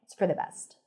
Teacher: Best is fully pronounced. It's for the reduced and connected.